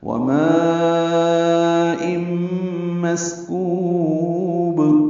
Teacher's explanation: ما میں الف مدہ کے بعد حمزہ ایک ہی کلمے میں آنے کی وجہ سے مد متصل ہے، لمبا کریں گے 4 حرکات سے زیادہ